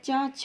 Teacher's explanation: जिन स्वर तंत्रों में कंपन नहीं होता है वो अघोष कहलाते हैं।